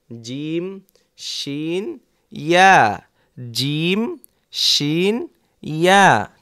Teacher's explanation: জিহ্বার মধ্যখান তার বরাবর উপরের তালুর সঙ্গে লাগিয়ে উচ্চারিত হয় জিম শিন ইয়া